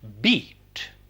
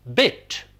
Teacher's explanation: a long vowel e as in beat it has a short counterpart e e as in bit